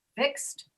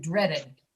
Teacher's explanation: After X, we hear ED like T. And after D, we hear at the end id, did.